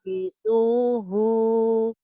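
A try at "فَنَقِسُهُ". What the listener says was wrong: Ki ya. Itu ki ya Bu. Itu kap. Pendek hunya. Hu-nya pendek ya.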